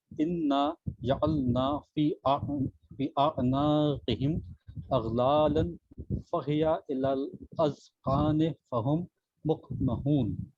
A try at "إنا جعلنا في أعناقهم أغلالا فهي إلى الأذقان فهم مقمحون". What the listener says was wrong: جیسے مثال کے طور کے اوپر حرف قاف کے تلفظ کے لیے، حرف قاف کے تلفظ کے لیے آپ انشاءاللہ تھوڑا پریکٹس کیجیے گا، بہتر ہو جائے گی.